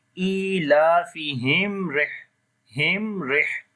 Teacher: And after the mim sakin, the next letter is ra. We make izhar shafawi here. We read the clear sound of mim.